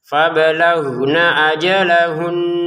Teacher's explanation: Huruf G-nya jangan seperti huruf G bahasa Indonesia karena itu terlalu kasar ya. Kita lembutkan sedikit lagi menjadi huruf Ghin dalam huruf hijaiyah, yaitu di tenggorokan bagian atas.